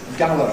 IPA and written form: ˈgaʊə (Gower)